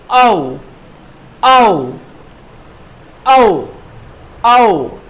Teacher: तो इसमें सबसे पहले हम बात करेंगे वृत्ताकार स्वर, मतलब इन स्वरों के उच्चारण में आपके जो होठ हैं वो वृत्ताकार हो जाते हैं, गोल हो जाते हैं